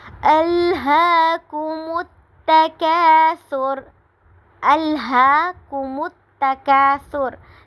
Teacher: تکا پہ الف مدہ ہو رہا ہے، اور را کو جب ہم وقف کریں گے تو را کو ساکن کر دیں گے